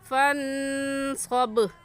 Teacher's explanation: با حروف قلقلہ میں سے ہے تو یہاں قلقلہ کریں گے